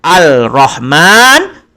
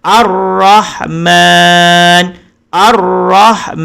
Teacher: jadi alif lam itu tidak ada lagi bunyinya dia hanya Ade pada tulisan tidak ada pada bacaan bukan al-rahman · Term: alif lam syamsiah